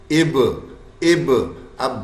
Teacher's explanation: حرف با ساکن حالت میں آیا, قلقلہ کرے گا, ایکو ساؤنڈ پروڈیوس کرے گا